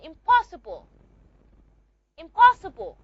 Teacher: Because you have a simulation. The p sound which is a bilabial sound is going to affect the nasal sound n. And it's not going to be pronounced na anymore.